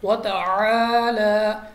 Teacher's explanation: اور یہاں پہ عین ہے، عین کے ساتھ الف مدہ بھی ہے، کیونکہ الف سے پہلے ہمارے پاس زبر آ گئی تو ہم نے کھینچنا بھی ہے۔ اب وتعالی کو الف سے نہیں پڑھنا، ہم نے عین ہی پڑھنا ہے